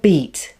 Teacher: in the word beat we have the vowel sound e followed by the strong consonant sound which is said with more force so the e vowel sound is slightly shorter